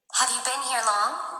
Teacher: rising intonation يعني السؤال ينتهي بنغمة مرتفعة